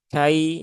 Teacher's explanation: ya sukun didahului harokat fathah maka dibaca dengan halus ya, dengan ringan, kai ya, tidak perlu disentak-sentak. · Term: huruf lin